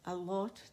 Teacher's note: اللہ کر کے جب ہم پڑھتے ہیں تو موٹا پڑا جائے گا